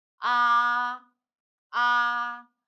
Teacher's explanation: first one we start with very high pitch and end it was high page so it's a flat one